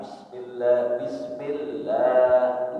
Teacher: tasdid yang dibaca itu ditahan dan ditekan. Kurang lebih 3 ketukan.